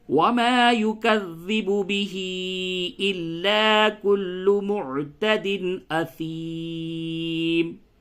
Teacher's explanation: کلو معتدن یہاں پہ اظہار ہوگا اور عین کی ادائیگی پہ توجہ دیں